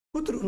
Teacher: એ રૂની ઉપર અનુસ્વાર છે પણ ભાર નહીં મૂકતા આપણે. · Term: કોમળ